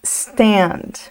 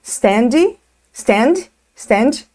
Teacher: muito cuidado para não adicionar um som de i antes da letra S